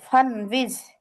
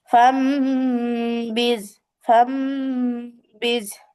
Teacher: এই নুন সাকিনকে মিম দ্বারা পরিবর্তন করে পড়তে হবে। অর্থাৎ এই নুন সাকিনের জায়গায় আমাদের এই মিম দিয়ে পড়তে হবে, এই যে ছোট্ট মিম, এটা দিয়ে পড়তে হবে। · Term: ইকলাবের কায়দা